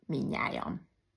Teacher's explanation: tud ami előtte hosszú volt és az utolsó a hetedik kiesés három mással hangzó közül a középső kiesik